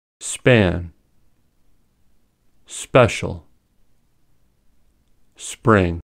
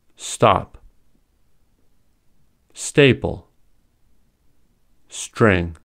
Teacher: There is no puff of air when we say them. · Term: Unaspirated